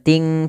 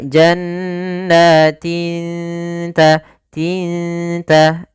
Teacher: Maka di sini samarkan kepada makhraj daripada huruf ta. Ta makhrajnya adalah ujung lidah kita menempel dengan gusi atas atau di perbatasan antara gusi dengan gigi seri atas itu. Maka lafalnya adalah jannatin, tin bukan ting ta, tapi dia jannatin ta, tinta. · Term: ikhfa